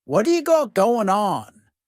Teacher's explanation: the word what is going to change to a D sound this is really typical of American English where a t that's surrounded by vowel sounds is going to change to a d it's called a flapped t and it just rolls off your tongue in a smooth way